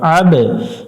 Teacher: এখানে আইন একটু গলা চেপে উচ্চারণ করবো আ গলা চাপবো এবং বা এর উপরে সুকুন আছে কলকলা করতে হবে